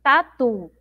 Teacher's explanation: A sílaba mais forte é o tu lá no final.